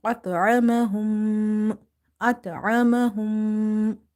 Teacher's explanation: after meme sakin, if you see another meme, you have to do the ghunnah or nasalization in such meme sound